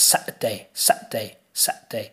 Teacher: so the T becomes what is called a glottal stop set so the t is as if you're going uh oh